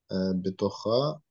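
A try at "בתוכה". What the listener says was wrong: Нет, тут хай. Это хет, а не бетуха, хай.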